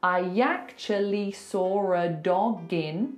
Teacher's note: You've put the g in front of the next word. It's one sound.